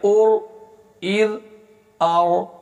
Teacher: را حروف قلقلہ میں سے نہیں ہے لہذا اس کو قلقلے کے بغیر پڑھیں گے، ہلائے بغیر پڑھیں گے